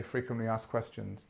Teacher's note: just say frequently asked questions and the ask becomes ass